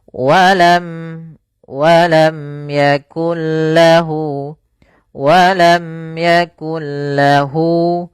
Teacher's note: izhar syafawi, yaitu suara mimnya dijelaskan dan tidak boleh digunakan, tidak boleh ada tahanan, tidak boleh walam yakul, enggak boleh, karena dia izhar jelas.